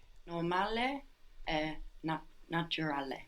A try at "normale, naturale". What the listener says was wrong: Very good.